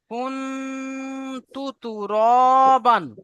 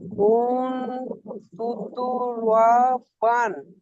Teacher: নাকে তুলে এক আলিফ করে গুণনা করে পড়তে হবে।